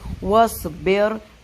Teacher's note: ہم اس کو؟ وَاصْبِرْ، صاد کے مخرج کا خیال رکھتے ہوئے، صاد راؤنڈ ماؤتھ کریں گے وسلنگ کے ساتھ، فلیٹ ہو گیا تو سین بن جائے گا